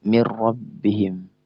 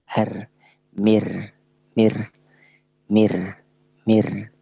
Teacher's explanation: Ya, lam dan ra, ya, yang ra ini bersifat takrir. Nah, ra ini benar-benar keluarkan sifat takrirnya, sifat bergetarnya. Ya, misalnya mir rabbihim.